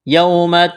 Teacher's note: یوم واولین ہے کھینچنا نہیں ہے